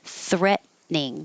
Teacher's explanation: So you won't hear the middle T because your tongue goes to the T position.